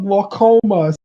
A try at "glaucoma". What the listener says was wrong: There's no R in glaucoma.